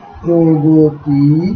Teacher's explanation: হ্রস্বইকার যুক্ত হওয়ার কারণে এখানে এই মধ্যবর্তী অ ওকারে পরিণত হয়েছে এবং এই মধ্যবর্তী গ এর ওকারে পরিণত হয়ে গতি না হয়ে গতি হয়েছে।